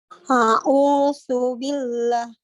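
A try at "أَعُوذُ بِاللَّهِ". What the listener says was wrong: Jadi Ibu masih membaca huruf S. Harus dibaca dengan huruf Z. Tapi gigit lidah tak. A'udzu. Zu. Ini zu.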